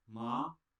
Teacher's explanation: Tone 2 starts out at a medium pitch and rises to a higher pitch.